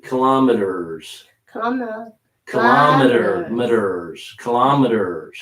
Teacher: I'm not really using the T at the end. I'm changing it into a little D.